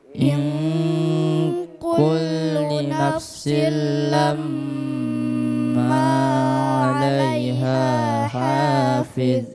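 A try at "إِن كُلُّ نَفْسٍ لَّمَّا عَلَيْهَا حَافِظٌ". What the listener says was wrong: ma panjang. In kullu nafsin lamma. Ma juga panjang, ada 2 ketukan. Sama dengan lamma. Ya, dengungannya tetap sama dengan panjangnya yang ma-nya.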